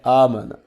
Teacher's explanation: حمزہ کھڑی زبر ایک الف کے برابر اس کو لمبا کریں گے